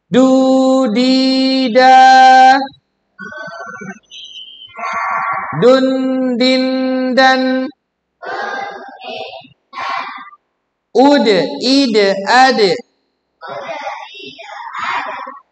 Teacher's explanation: huruf dal sifatnya adalah qalqalah atau memantul ketika disukunkan. Dia tidak ada udaranya dan dia tidak bisa mengalir suaranya.